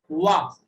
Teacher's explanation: वा जो ध्वनि है उसे दंतोष्ठ बोला जाता है। दांत और ओष्ठ एक दोनों एक साथ काम करेंगे, दंतोष्ठ है वा